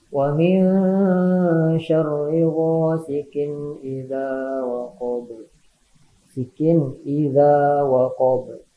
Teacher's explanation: Disebut idhar halqi, hal ini disebabkan oleh makhraj dari huruf-huruf tersebut keluarnya dari dalam tenggorokan.